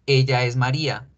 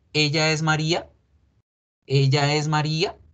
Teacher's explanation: suben la voz al final y así es como se crean las preguntas en español